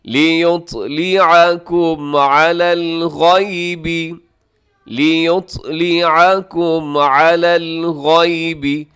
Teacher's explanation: اس میں جو حرف طا ہے اسے آپ قلقلہ کیجیے گا